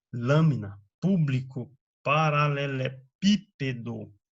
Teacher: palavras cuja sílaba tônica é a antepenúltima